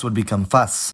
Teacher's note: In the situations where the plosive was first, the fricative might do compensatory lengthening to take up the space left by the now-gone plosive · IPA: [fɑsː]